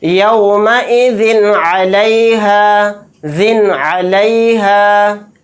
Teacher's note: اس نون کی آواز کو ظاہر کر کے بلا غنہ کے جلد پڑھیں گے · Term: اظہار